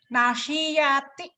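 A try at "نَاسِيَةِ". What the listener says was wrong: Nanya panjang ya Bu. Nasiati.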